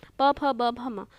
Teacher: हमारे lips touch होते हैं और जीभ का आंतरिक भाग वो किसी अन्य को टच नहीं करता, इसलिए हम इसे ओष्ठव्य व्यंजन कहते हैं।